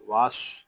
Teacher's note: یہاں الف و لام نہیں پڑھے جا رہے، ہم واو کو صاد کے ساتھ ملا دیں گے. صاد حروف متعالیہ میں سے ہے، اس کو پوری یعنی موٹا پڑھیں گے.